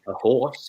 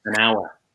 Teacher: Even though hour is spelled with an H, it has a vowel sound.